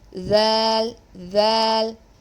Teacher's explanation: your tip of the tongue will be touching the upper incisors the upper two front teeth front teeth on the edges ok below the edge of two upper central incisors and there